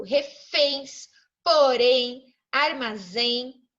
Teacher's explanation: a sílaba tônica está no final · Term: palavras oxítonas